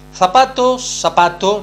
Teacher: El caso del uso de la famosa Z, de la letra Z, o conocida técnicamente como predorsal fricativa sorda.